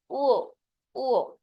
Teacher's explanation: ও এটা বলার সময় আমাদের নাকে আঘাত করে বা নাক দিয়ে আসে। এ কারণে এটাকে বলা হয় নাসিক্য।